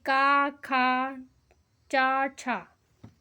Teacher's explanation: प्रत्येक वर्ग का पहला व दूसरा व्यंजन अघोष ध्वनि होता है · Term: अघोष व्यंजन